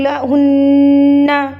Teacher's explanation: نون یہاں پر گنہ کریں گے کیونکہ یہاں پر کیا ہے جی؟ نون مشدد ہے.